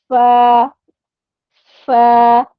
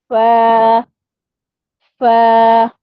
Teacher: اوپر والے جو دانت ہیں وہ نیچے والے ہونٹ کے گیلے حصے سے جب ٹچ ہوں گے تو پھر فا ادا ہوگا اور تھوڑی سی ہمیں ایئر بھی محسوس ہوگی